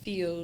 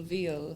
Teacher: your lips, your mouth, everything moves exactly the same, but all you're doing is you're adding your voice box to get the v sound